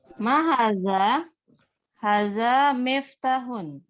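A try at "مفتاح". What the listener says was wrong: Miftahun, ahsanti.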